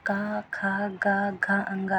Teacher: अगर हम बोलेंगे तो का बोलेंगे तो गले से आवाज़ आएगी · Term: कंठ